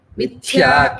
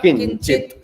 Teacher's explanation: So first time Mithya, it is the second Mahaprana. In Kinchit, it is only Alpa Prana.